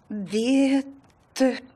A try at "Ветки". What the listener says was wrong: Внимательнее. Не придумывай лишние буквы.